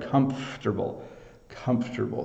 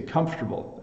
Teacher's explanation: we don't elongate the syllable in the middle so um we simply kind of shorten the word and we